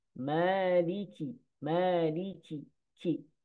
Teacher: Huruf kaf keluarnya dari pangkal lidah dengan langit-langit di bawah makhraj qaf. Dan ada sifat hamasnya.